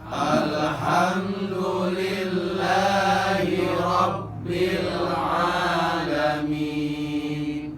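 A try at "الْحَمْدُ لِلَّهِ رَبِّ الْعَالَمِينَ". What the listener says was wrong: Belajar bersihnya, alna sing bersih, jangan ada kol-kolahnya, jangan ada pantulannya, jangan nah itu mah ada mantulan. Belajar bersih, tahan dulu lidahnya di atas. Al baru ha gitu. Jangan al ha. Al ha. Alhamdulillahi Rabbil alamin.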